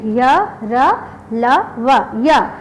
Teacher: यह बोलते समय अ भी आ रहा है, ये स्वर भी ना, ये पूरी तरह स्वर भी नहीं है और व्यंजन भी नहीं है, बल्कि इन दोनों के ये मध्य सा लगता है, बीच का सा उच्चारण लगता है, य, र, ल, व। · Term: अर्ध स्वर